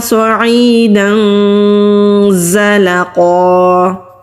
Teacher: دال کے پر تنوین ہے، تنوین کے بعد زا آ رہا ہے تو یہاں پر اخفا کریں گے ، زبان کو ہم نیچے ہی اپنی ہی جگہ پر رکھیں